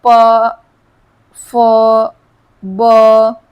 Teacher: ओष्ठ की बात करें जो हमारे होठों से बोले जाते हैं